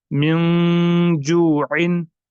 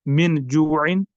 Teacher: میں پڑھوں گا میم، نون، زیر، من، جیم، واو، پیش، جو، من، جو، عین، دو زیر، عین، من جوعن. یہاں پر میں نے نون ساکن کی جو آواز ہے وہ ناک میں لی، یعنی اس کو میں نے ناک میں چھپایا. میں نے اس طرح پڑھا من جوعن.